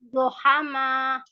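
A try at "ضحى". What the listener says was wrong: Masih pakai mulut. Masih pakai mulut depan itu, Bu. Lidahnya masih ke depan. Lidahnya ke samping ya.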